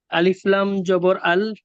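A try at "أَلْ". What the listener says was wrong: আলিফে জবরদের পেশ নিযম কোনো কিছু থাকলে সে আলিফ কি আলিফ থাকে? হামজা হয়, হামজা বলে।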